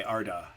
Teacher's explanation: if you say ar-da, go on and say ar-da your tongue moves back, it doesn't go ar-da. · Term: co articulation